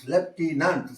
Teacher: So accent falls on the second syllable.